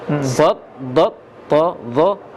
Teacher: Yang menebalkannya pangkal lidah. dengan tengah lidah kena langit.